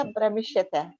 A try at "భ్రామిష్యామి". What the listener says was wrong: భ్రమిష్యామి. భ్రమిష్యామి దాదు బ్రాహ్మి దాదు భ్రామిష్యామి. భ్రా వస్తుంది, దీర్ఘ వస్తుంది. భ్రామిష్యామి.